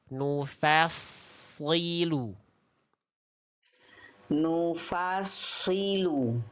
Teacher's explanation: Nufalnya jangan ke bawah tebal. Yang tebal sadnya aja